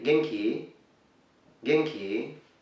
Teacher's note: simply say Genki, Genki, rising up the intonation